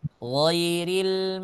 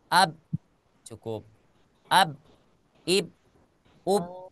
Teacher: Ketika kita mengucapkan huruf ghain, ada suara yang mengalir ketika kita mensukunkan hurufnya. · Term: sifat rokhawah